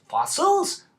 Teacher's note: You can tell by the inflection that they don't understand the word, often pronounced in the form of a question.